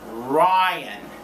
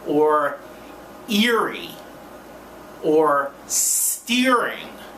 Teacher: you pull the tongue back I.E retroflex it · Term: r sound